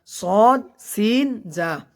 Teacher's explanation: সদের মাখরাজ হলো যে জিহ্বার আগা সামনের নিচের 2 দাঁতের পেট ও আগার সঙ্গে লেগে সদ উচ্চারণ হয়।